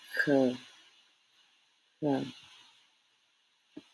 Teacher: This sound is kind of like the C in English, but harder sound. More from your throat.